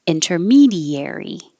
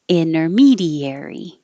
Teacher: This one, inter, you can say with the T, inter, or without the T, inner. So that's why there's 2 options.